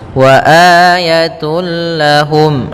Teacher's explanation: Wa ayatul lahum, langsung masuk lam dan tanwinnya hilang suaranya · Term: idgham bila gunnah